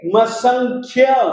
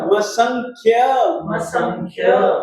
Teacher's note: ख में आप किसी भी स्वर को जोड़ेंगे नहीं, बल्कि ख को आप बिल्कुल हलंत बोलेंगे